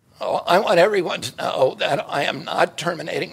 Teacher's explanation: he has a condition called spasmodic dysphonia, which causes muscle spasms around his vocal cords